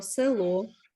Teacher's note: село наголос на о відповідно у корені слова є ненаголошена е